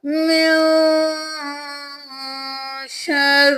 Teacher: نون پہ اخفا کریں گے، نون ساکن ہے تو یہاں پہ اخفا ہوگا